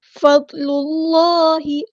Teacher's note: اللہ، ضاد ہمارا heavy letter ہے تو پورا ادا کریں گے، لام کو ہم نے لام کے ساتھ ملا دینا ہے، حمزۃ الوصل ہمارا ڈراپ ہو جائے گا